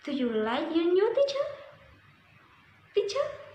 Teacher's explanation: Rising intonation invites the speaker to continue talking.